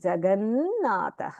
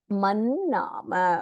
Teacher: प्रसिद्धः जगत् नाथः तकारस्थाने नकारः भवति